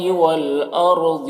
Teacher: را کو پر پڑھیں گے، ضاد کو بھی پر پڑھیں گے، یہ بھی حروف مستعلیہ میں سے ہے۔